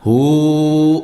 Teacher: Mad silah qasirah. Jadi dibacanya 2 harakat.